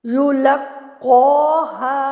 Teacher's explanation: कौ को मैं पुर कर रही हूँ, बाकी तमाम हरूफ इर्द गिर्द वाले बारीक हैं।